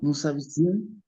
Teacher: Como el verbo empieza con H y la H no suena, se junta la A con la S que anteriormente no pronunciaba.